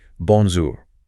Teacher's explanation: >> That's a >> that soft R in bonjour is so important. It shouldn't be the hard English R. It's softer, more in the back of the throat. Bonjour. >> Practicing that specific sound transition from the nasal on to the soft R slowly.